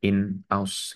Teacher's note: Nun sukunnya bertemu dengan Hamzah Nun sukunnya itu dibaca jelas seperti yang sebelumnya in ausb bukan ya tapi in aus gitu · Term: izhar halq